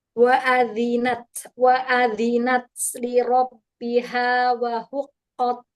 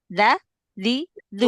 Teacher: huruf zal, jangan lupa digesek sedikit biar nggak kayak dal.